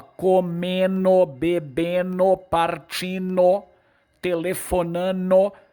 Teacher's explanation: Quando eu digo ele está comendo, o D caiu. Houve uma síncope.